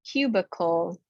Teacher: That I takes the schwa sound. Cubicle. This long U in the middle of the word is always the tricky one.